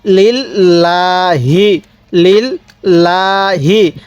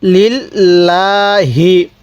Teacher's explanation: আল্লাহ শব্দের এই লামটাকে আমরা চিকন করে পড়ব। নিয়মটা শিখে রাখবেন, আল্লাহ শব্দের লামের পূর্বে যদি জের থাকে, তাহলে ওই লামটাকে আমরা চিকন করে পড়ব।